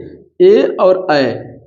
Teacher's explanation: ए और ऐ का उच्चार स्थान क्या है कंठ तालू है